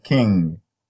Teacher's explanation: The is a voiced alveolar, and then so voiced alveolar nasal, and then the is a voiced velar, because the velum, the back of the tongue comes in contact with the velum, voiced velar nasal